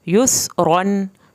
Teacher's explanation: یا پہ سین یس، را دو زبر الف رن، یس رن۔ سین کو سیٹی کی آواز کے ساتھ پڑھنا ہے